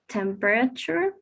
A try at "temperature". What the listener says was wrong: In the previous one, is instead of temperature, it feels like the stress that you're saying is in the ra. Temperature, no, temperature. All right, temperature.